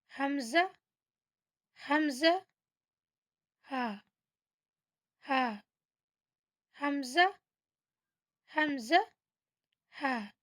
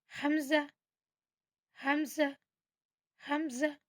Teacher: ये हमारे हलक के नीचे वाले हिस्से से निकलता है।